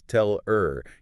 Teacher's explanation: And the H deletion, we drop the H on unstressed little words like he, him, her, or have. >> So, a phrase like tell her becomes tell er.